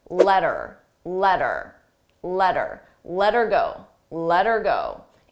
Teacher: Here, notice how her sounds like You don't hear the H, but I also attach it to the word before. So I link those sounds together.